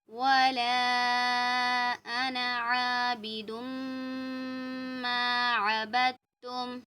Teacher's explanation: ये जो वर्ड है अना, इसकी अलिफ को हमें नहीं खींचना। अलिफ से पहले ज़बर तो अलिफ मद्दा होता है ना, लेकिन यहाँ पर हम नहीं खींचेंगे।